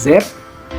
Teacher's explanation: ketika kita mengucapkan Z, pita suara itu bergetar